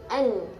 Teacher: huruf nun itu adalah dari ujung lidah bertemu bawah sedikit dari makhraj lam